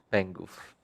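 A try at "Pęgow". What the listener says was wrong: I swear it's Pengo. It's written Pengo, but it's you, you read some extra letters.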